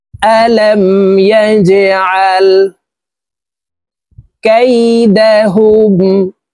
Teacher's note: এই জিম হরফ কলকলার হরফ নিচের দিকে ধাবিত করে ধাক্কা দিয়ে উচ্চারণ করতে হবে।